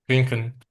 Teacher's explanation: elə bil yeyilir, sondakı sait yeyilir. Bəzən onu belə bayaq transkrip transkriptə gördüyünüz ə kimi də yazırlar.